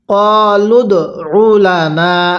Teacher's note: আরেকবার বলুন ক্বালুদউ লানা। দালের মধ্যে ধাক্কা দিবেন, দালটা হলো কলকলার হরফ